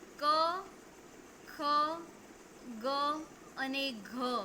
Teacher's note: ધારો કે ક ખ ગ અને ઘ આ કંઠ્ય વ્યંજનો છે. આ વ્યંજનોનું તમે ઉચ્ચારણ કરો છો ત્યારે તમારો અવાજ જે તમારો ઉચ્ચારણ છે એ કંઠમાંથી આવે છે.